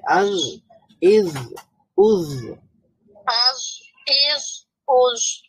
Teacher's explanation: আচ্ছা, আভ, ইজ, উজ, এটাও নরম হবে। জিহ্বার অগ্রভাগ সামনের উপরের দাঁতের অগ্রভাগের সাথে মিলিয়ে উচ্চারণ করতে হবে।